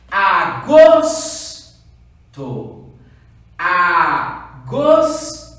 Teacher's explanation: Eu chamei mais forte qual sílaba? O gos. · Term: sílaba tônica